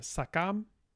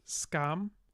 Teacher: these little minor syllables in Proto-Sakrat, the vowels drop out, leaving some secondary articulations which do become fun later on, but they drop out.